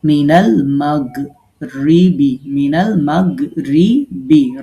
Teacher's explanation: মিনাল মাগরিবি মিনাল মাগরিবি রা বারিক হবে।